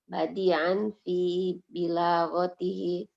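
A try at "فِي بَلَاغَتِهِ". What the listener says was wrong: Ini bukan bilaghah, balaghah.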